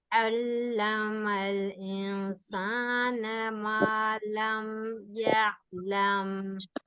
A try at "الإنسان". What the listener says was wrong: اور انسان کا جو نون ساکن کا غنہ ہے وہ مرقق ہے. انسان، انسان، ایسے مفخم نہیں کرنا، مرقق.